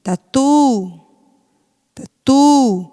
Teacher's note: O tá, a gente quase não pronuncia, não é isso? Mas o tu é a sílaba forte.